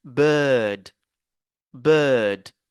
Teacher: Ne dites pas bird, ne prononcez pas le R, parce que c'est le I et le R euh, qui sont remplacés par ce symbole-là.